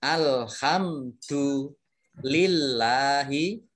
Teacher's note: Baik, alhamdu ini mim sukun bertemu dengan huruf dal. Nah, mim sukun bertemu dengan huruf dal itu dibaca jelas. Ini namanya izhar safawi.